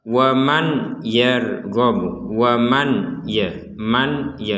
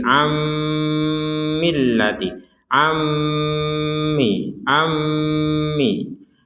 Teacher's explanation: jadi ada dengungan di rongga hidung kita